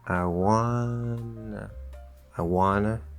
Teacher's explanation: okay super short and quiet on that i